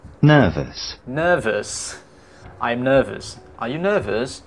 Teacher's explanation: R sound before consonant is not pronounced as well. Bunyi R sebelum consonant juga R tidak dibaca.